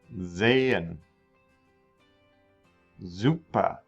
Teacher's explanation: the s sound does sound like a z at the beginning of a word